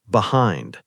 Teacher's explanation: >> So, behind is pronounced behind. Two syllables, stress on the second syllable.